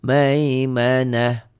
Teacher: ta marbutoh berubah bunyi jadi ha